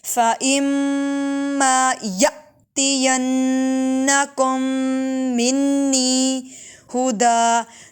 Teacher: حمزہ ساکنہ جھٹکا دے کے پڑھیں گے